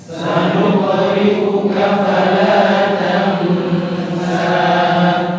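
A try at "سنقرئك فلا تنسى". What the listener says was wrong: Sanuqu. Bukan sanuq. Sanuqu. Tebal ya, qaf itu huruf tebal. Jadi tidak diucapkan sanuqri, sanuqri. Bukan sanuqri, tetapi sanuqri ya, tebal qaf.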